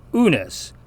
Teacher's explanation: notice it doesn't have kind of a y in front of it when it's the first letter in a word, as it sometimes does in English.